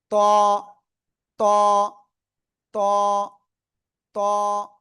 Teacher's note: জিহ্বার আগা উপরে দুই দাঁতের গোড়ায় লাগান, লাগিয়ে একটু মোটা আওয়াজে উচ্চারণ করতে হবে।